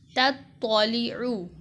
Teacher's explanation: واضح فرق ہے، لام زیر لی، تطالی، عین پیش عو، تطالعو، تا باریک پڑھی جائے گی جبکہ طا کو پر کر کے موٹا کر کے پڑھیں گے